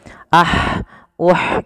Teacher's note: makhraj huruf ha kecil adalah dari tengah tenggorokan kita